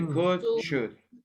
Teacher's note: The L is silent. You don't say anything. You don't say the L.